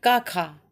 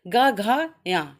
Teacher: का खा, जो पहले के 2 वर्ण हैं वो क्या हो गए अघोष, और गा घा या, ये 3 जो वर्ण हैं ये क्या हो गए घोष या सघोष